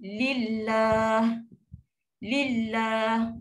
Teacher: Lam tu bunyi nipis sebab apa? Sebab bila huruf sebelum tu baris bawah. Bawah saja automatik dia akan nipis.